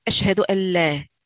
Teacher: On peut remarquer aussi, par exemple, pour la shahada, ils disaient pas ashhadu an la, on prononçait pas le nun sakina, ils prononçaient directement l'idgham bil ghunna, ashhadu an la.